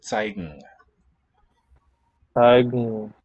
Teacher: in a case like zeigen, the n assimilates to the place of the stem final. So it's going to be an eng sound here.